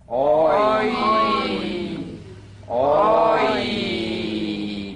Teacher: It's the combination of the number three structural vowel with the Y buzz.